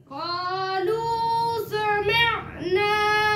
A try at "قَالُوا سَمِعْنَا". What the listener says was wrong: قاف موٹا پڑھو نا قالو میں